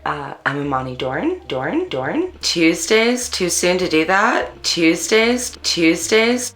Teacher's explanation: African Americans in California participate in local features such as ooh fronting and up talk